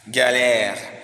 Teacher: à Paris, l'articulation du phonème K et G a la tendance de se palataliser quand il se trouve avec A. Parce que la voyelle A français, ce n'est pas A comme en espagnol, Ana, qui est au milieu de la bouche, mais c'est plus en avant, c'est plus en face, et ça met la consonne à se palataliser.